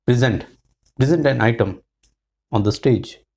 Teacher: Zent has got stress. The stress is on the second syllable. Zent. So it will be pre, not pray.